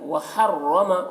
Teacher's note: را کو پر پڑھیں گے کیونکہ رائے مشددہ کے اوپر زبر ہے